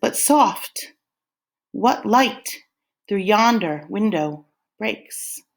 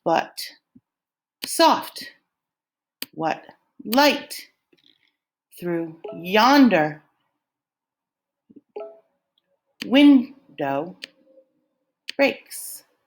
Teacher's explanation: So if you filled this in, you would say iambic pentameter is a line of 10 syllables that goes in the pattern of unstressed and then stressed syllables